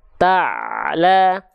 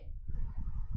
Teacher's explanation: Jadi ain dilafalkan tepat dari bagian tengah tenggorokan kita, jangan sampai terputus ta'la ataupun terlalu mengalir ta'la, nggak, tapi cukup sedikit saja ta'la.